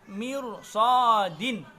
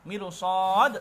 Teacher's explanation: ro sukun tapi sebelumnya kasroh, tapi itu tidak dibaca dengan tipis, melainkan dibaca dengan tebal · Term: tafkhim tebal